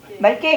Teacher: 기역이 오면 동음이기 때문에 두 번 소리 내는 게 어때요? 어려우니까 기역을 떨어뜨려 버리는 거죠.